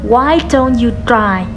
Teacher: Câu hỏi bắt đầu từ W question. Chúng ta hạ giọng vào cuối câu.